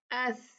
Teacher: हवा निकले, ये हम्स लेटर है